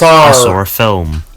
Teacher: people sometimes add an R sound to a word that doesn't actually have one if it's followed by a vowel in the next word. For example, in the sentence I saw a film. · You can hear that there's an R sound connecting saw and ah. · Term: intrusive R